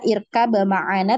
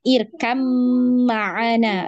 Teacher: jadi kita tidak baca irkab ma'ana tapi irkam ma'ana, langsung diidghamkan ke huruf mim ya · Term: hukum idghamnya